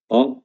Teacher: Ta makhrajnya adalah ujung lidah bertemu dengan pangkal gigi seri atas, ta, dan dia tebal, ya.